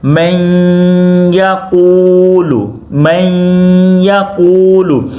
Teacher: اب نون ساکن کے بعد یہاں پہ یا ہے تو ادغام بھی ہوگا ساتھ گنہ بھی ہوگا۔